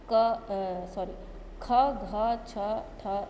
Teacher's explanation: दूसरा है महाप्राण, इनके उच्चारण में फेफड़ों से बाहर निकलने वाली वायु की मात्रा अपेक्षाकृत अधिक होती है